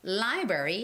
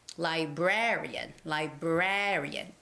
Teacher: library has the first syllable stress library and librarian librarian has the second syllable stress librarian librarian the syllabus the stress goes on the syllable raa